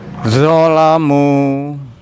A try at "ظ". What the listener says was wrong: lidahnya kurang keluar dikit